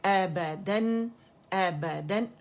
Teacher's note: Sound कहाँ से निकलेगी, अक़सुल हल्क से, हमज़ा की आवाज़, ठीक है. आ की आवाज़ नहीं निकलेगी.